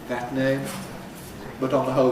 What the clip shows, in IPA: ˌðæt ˈneɪm